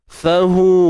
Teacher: hu kita baca dengan 4 atau 5 harakat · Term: maksilah tawilah